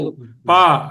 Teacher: పాపాలు అనేది పెదవుల కలయికతో ఏర్పడుతుంది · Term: ఓష్ట్యములు